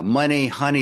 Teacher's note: Rhymes where there're two syllables and the emphasis is on the first syllable